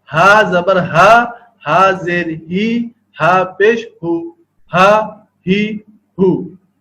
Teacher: حمزہ ہا حلق کے نچلے حصے سے